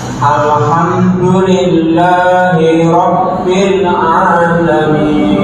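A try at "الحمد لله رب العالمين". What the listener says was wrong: Nah, kurang sempurna harokatnya B. Kenapa jadi B? Rabbi. Alha. Tawasudkan lam.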